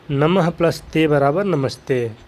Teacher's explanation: विसर्ग के बाद त थ में से कोई भी वर्ण आया हो तो विसर्ग क्या हो जाएगा? आधा स हो जाता है। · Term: विसर्ग का आधा स